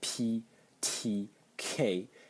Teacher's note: as I said ptk they're already aspirated